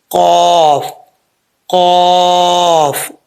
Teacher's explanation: नरम तालू से लगेगा तो कफ पड़ा जाएगा · نرم تالو سے لگے گا تو قاف پڑھا جائے گا، قاف، قاف. اوکے، قدیر.